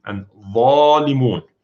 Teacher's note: Because dha is one of the hard sounds followed by a long vowel, so the tafkhim even gets bigger. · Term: highest level of tafkhim